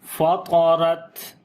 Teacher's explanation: تا کے اوپر صفت شدت اور صفت ہمس دونوں کریں گے، یعنی پہلے آواز کو بند کریں گے شدت کی وجہ سے اور پھر سانس جاری کریں گے تو آواز آئے گی فطرت۔ دوبارہ پڑھیں گے اذا السماء انفطرت